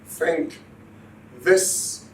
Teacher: the tip of the tongue is inserted between the upper and lower teeth